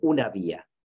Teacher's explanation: Y una vía sí que se produce con ese sonido aproximante. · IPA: [β]